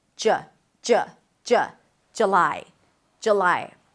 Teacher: But a lot of people drop the first vowel to a schwa.